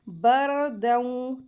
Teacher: را ساکین ہے، اس سے پہلے زبر آ رہی ہے تو را کو ہیوی کر کے پڑھیں گے